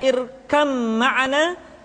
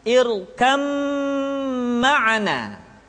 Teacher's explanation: bas ta Kemudian yang kedua yang mesti diperhatikan dalam idgham adalah leburnya huruf ba mati ke dalam huruf mim